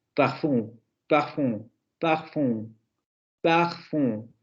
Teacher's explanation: Tenemos el par de esta, que sería la anterior semiabierta labializada, y además se le añade el asunto de la nasalización